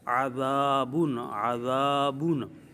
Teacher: زال پر سیٹی کی آواز پیدا نہیں کرنی اور سختی بھی نہیں